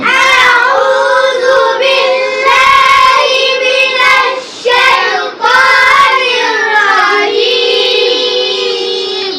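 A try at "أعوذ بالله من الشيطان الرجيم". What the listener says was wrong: ফাঁকা হচ্ছে না দাঁত। রাজিম রাজিম রাজিম।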